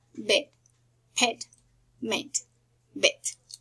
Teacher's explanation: The next sound is called the mid, the closed mid front, and the pronunciation is eh, like bed, pet, meant, bet.